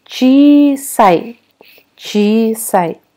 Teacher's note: Обратите внимание, у нас здесь пишется сначала слог «чи», потом мы пишем еще отдельно знак «и», и потом «са» и еще одно «и». Но вот эти два «и» подряд у нас произносятся просто как долгий «и». Чи-сай, чи-сай.